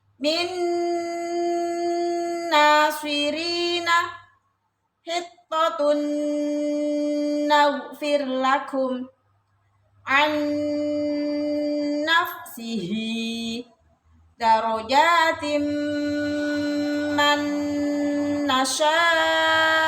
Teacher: Contoh nun sukun atau fathatain, kasrotain, dummatain bertemu nun, dibaca dengung yang lama. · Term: idgham bi gunnah